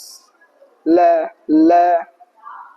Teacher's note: Huruf lam makhrajnya sisi lidah. La sisi lidah bagian samping ya. Itu menempel di ee gigi seri atas.